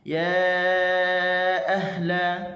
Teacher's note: kalimah ahla, huruf ha, lepaskan suara, lepaskan angin